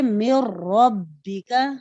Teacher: جیسے مر ربک، نون ساکن کے بعد لام اور را میں سے یہاں را ہے، اور ہم نے نون ساکن کو را متحرک میں اس طرح ملا کر پڑھا کہ دونوں ایک ساتھ مشدد ادا ہوئے اور ان میں غنہ نہیں ہوا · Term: ادغام بلا غنہ